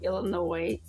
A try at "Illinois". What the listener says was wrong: Illinois with no S.